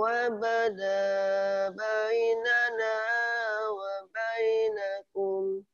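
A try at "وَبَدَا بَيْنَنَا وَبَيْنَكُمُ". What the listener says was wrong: Oke, di yang saya lingkarin sini, Mas, di sini jangan bayi ya, jangan dipisah, tapi langsung ke huruf linnya. Jadi, wabada bayinana, jadi bayinana, ke iya langsung, coba.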